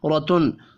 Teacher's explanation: زبر کی وجہ سے تنوین کے بعد حمزہ ہے، اظہار حلقی ہوگا، غنہ نہیں ہوگا